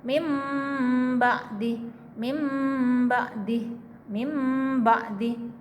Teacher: Itu disamarkan disertai dengan suara mendengung ya. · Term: iqlab